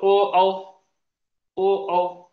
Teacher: या दोन स्वरांचा उच्चार करताना ओठ एकमेकांना चिटकतात, त्याचबरोबर यांचा उच्चार कंठावर आहे, म्हणून यांना कंठोष्ठ वर्ण म्हटलेले.